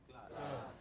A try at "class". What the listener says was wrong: They're long, you know, very long. Jaw opens.